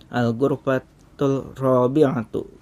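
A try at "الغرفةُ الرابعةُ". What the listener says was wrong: Al-ghurfatur rabi'atu ya, ro-nya lebur, lamnya melebur. Al-ghurfatur ya, apa samsiah nih ya, bukan al-ghurfatul tapi al-ghurfatur rabi'atu. Melebur juga.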